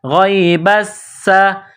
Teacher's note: با سین زبر بس، سین زبر سا، غیب السا، سین میں سیٹی کی آواز پیدا کرنی ہے۔